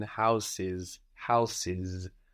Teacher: the S by itself in English often sounds like a zed anyway